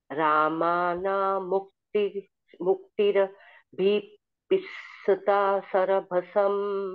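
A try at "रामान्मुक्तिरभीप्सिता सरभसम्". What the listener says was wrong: Not Ramana, Raman. So you will do this sandhi.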